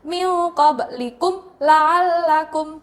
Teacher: qoblikum ada mim sukun bertemu dengan huruf lam bacanya jelas nah itu dinamakan dengan bacaan idhar syafawi jadi tidak ada mendukung